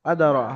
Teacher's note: আদারা হামজার পর জাবার, হামজার পরে জাবার, এক আলিফ পরিমাণ টান দিয়ে পড়তে হবে